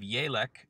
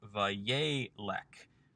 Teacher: with the second seirei also becoming a segol under the lamed. Again, the Wayyiqtol form shifts the accent from the last syllable back to the second to last syllable in these shorter forms, so that we end up losing letters, losing vowels, or shortening vowels.